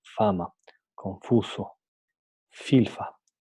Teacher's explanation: hablar no antes de hablar en español general para su articulación los incisivos superiores se apoyan en labio inferior permitiendo una salida del aire continua pero con fricción